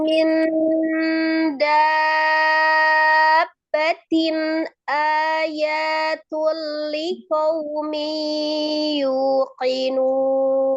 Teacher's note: Marbutohnya ketika dia disukunkan menjadi bunyi huruf ha ya, ketika diwasal maka berbunyi huruf ta.